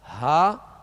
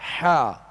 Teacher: ہا جو ہے وہ ابتدائی حلق سے اور حا جو ہے درمیانی حلق سے ادا ہوتا ہے. اور ان میں فرق جو ہے یہی ہے جو آپ آواز کو محسوس کر رہے ہیں، ہا اور حا، ہا حا، یہ فرق ہے ان کے اندر.